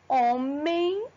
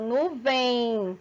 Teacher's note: quando eu falo homem, eu tenho o som de I na última consoante da palavra homem. Quando eu falo nuvem, também, a última pronúncia minha tem som de I, tá bom?